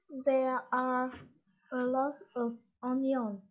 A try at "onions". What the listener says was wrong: Onions. Còn quên âm cuối nha.